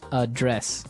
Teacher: So the verb address has the stress on the second syllable.